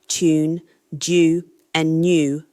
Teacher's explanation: American English shows widespread yod dropping, tune, due, and new lose that palatal glide. British English generally maintains it.